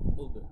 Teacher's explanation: গলার ভেতর থেকে কিন্তু আমাদের বলতে হবে, এবং পাশাপাশি কলকলাও এখানে আছে